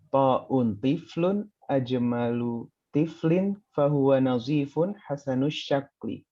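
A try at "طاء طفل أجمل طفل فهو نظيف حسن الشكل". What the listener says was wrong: Barakallahu fiik. Barakallahu fiik.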